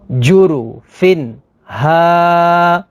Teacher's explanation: تنوین کے بعد ہا ہے، ہا حروف حلقی میں سے ہے، تو یہاں پر اظہار ہوگا یعنی غنہ نہیں کریں گے